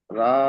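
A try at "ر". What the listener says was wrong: রা বললেন কেন ভাই এতদিন পরে? র হবে। র লাম জের রিল।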